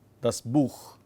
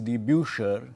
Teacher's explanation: plural is die Buecher, the kh becomes sh